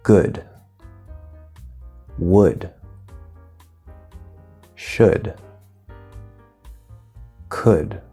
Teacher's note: which would be Oh Oh D or oh you LD where the L is silent there's no L sound